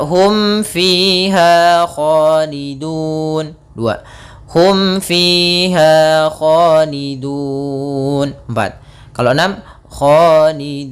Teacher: Karena di sini ada huruf waw, yang mana huruf waw termasuk huruf mad, dan setelahnya ada huruf yang kita matikan. Maka panjang dunya kita boleh panjangkan 2 harokat, boleh pula 4 harokat, boleh pula 6 harokat. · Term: mad arid disukun